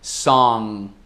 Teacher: quase pronunciando o G ao fim da palavra, mas não pronunciando, tipo, eu estou a ponto de pronunciar song, mas parando antes do G duro